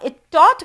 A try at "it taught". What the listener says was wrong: it taught. You need to pronounce that T with more aspiration.